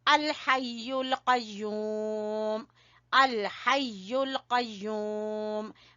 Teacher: हा को गले के दरमियान से, कौफ को जबान की जड़ से